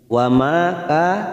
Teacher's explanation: Wa ma ka masing-masing dua harokat, ma fathah diikuti alif, ka fathah diikuti alif, dua harokat kita panjangkan